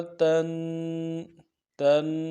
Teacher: تنوین ہے غنہ کریں گے، غنے کو ایک الف مقدار میں کھینچیں گے